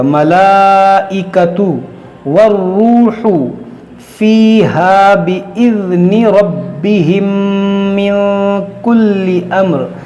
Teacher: میم ساکن کے بعد دوسری میم ہے، یہاں پر ادغام شفوی ہوگا، اور یہاں پر نون ساکن کے بعد کاف ہے تو یہاں پر اخفا ہوگا.